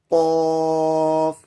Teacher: قاف کا مخرج زبان کی جڑ اس کے برابر اوپر تالو سے قاف ادا ہوتا ہے